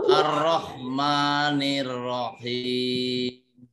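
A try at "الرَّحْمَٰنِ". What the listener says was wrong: Ya, hati-hati bunyi ha mampir ke atas ya. Bunyi ha mampir ke atas jadi huruf kha. Huruf kha itu kotor. Huruf kha nggak usah dilatih. Tapi huruf ha itu yang dilatih. Bersih. Ar-Rahman. Ar-Rahman. Bukan ar-rah. Ada kotor dikit nyangkut, maka itu temennya, saudaranya ke atas, huruf kha ya. Ini ha.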